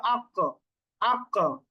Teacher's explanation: জিহ্বার গোড়া তার বড় উপরে তালুর সাথে লেগে কফের উচ্চারণটা হচ্ছে